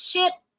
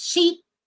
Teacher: the vowel sound in ship is I and the vowel sound in sheep is e.